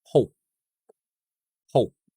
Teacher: I finish the word or I'm ending the word with my lips closed. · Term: unreleased sound